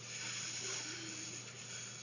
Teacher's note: 그러면 이 두 개의 소리를 어떻게 구별할지 먼저 F 소리부터 보겠습니다. F 소리는 윗니로 아랫입술을 물고 계속해서 마찰이라고 했습니다. 목젖은 울리지 않습니다.